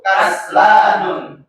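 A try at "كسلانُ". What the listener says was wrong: Kaslanu. Dia tidak tanwin, ini salah. Kaslanu khobar lakinna. Salah ketik ini, kaslanu itu. Domam. Enggak boleh. Bukan mabni, dia mamnu minas sarf. Mamnu minas sarf.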